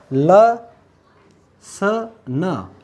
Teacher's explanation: अपनी जो जीभ है, जीवा है, वो मसूड़ों को स्पर्श करती है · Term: वस्त्र